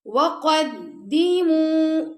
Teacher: قاف کو موٹا پڑا دال کو باریک اور میم ساتھ واو مدہ تو اس کو ہم نے 2 سیکنڈ تک لمبا کیا